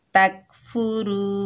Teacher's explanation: रॉ के ऊपर पेश, आगे वाव साकिन है, ये वाव मद्दा है, इसको एक अलिफ की मिकदार खींचकर पढ़ेंगे और रॉ मोटी पड़ी जाएगी।